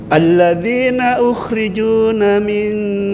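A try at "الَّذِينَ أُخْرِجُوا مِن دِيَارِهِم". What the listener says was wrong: Enggak, bukan ukhrijuna, ukhriju.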